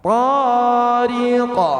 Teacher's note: Tidak bertasdid. Maka dia dibaca langsung dipantulkan. Namun pantulannya agak terang. Thqo ya pantulannya agak terdengar. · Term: qalqalah wusta